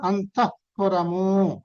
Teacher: విసర్గ తర్వాత పకారం ఉంటే వచ్చే సౌండ్ ని ఉపద్మనీయము అని అంటాం